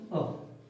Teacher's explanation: जीभ के आधार पर मध्य जो स्वर होता है वो होता है अ। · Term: मध्य स्वर